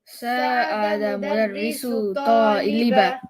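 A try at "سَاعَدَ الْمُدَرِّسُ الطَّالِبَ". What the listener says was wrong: I need you to say the L here. Sa'ada al-mudarrisu at-taliba.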